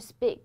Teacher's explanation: 送气的清辅音会变为不送气的，你可以这样理解，就是现在这样一些▁p、t、k▁会分别变成中文当中的▁b、d、g